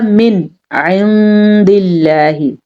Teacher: ساکن کے بعد والا حرف حروف ہلکی میں سے ہو تو نون ساکن کو ظاہر کر کے پڑھتے ہیں، جیسے کہ ہم نے پڑھا من عند اللہ، ٹھیک ہے، اور غنہ بھی نہیں کرتے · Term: اظہار